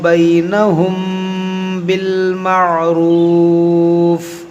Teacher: میم ساکن کے بعد با ہے، یہاں پر اخفاء شفوی کریں گے۔ اخفاء شفوی کا قاعدہ لگے گا، یعنی غنہ کریں گے۔